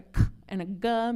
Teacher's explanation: a k and a g made with the back of our tongue